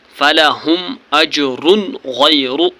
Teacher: غیر فلہم اجر یہاں پر دو پیش کے بعد غین ہے غین حروف حلقے ہیں اس لیے یہاں پر نون کو ظاہر کر کے پڑھنا ہے